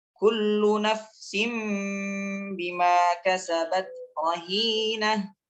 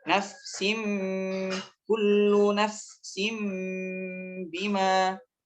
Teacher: Awalnya nun sukun atau tanwin bertemu dengan huruf ba, kemudian dirubah menjadi bunyi mim, bunyi huruf mim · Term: iqlab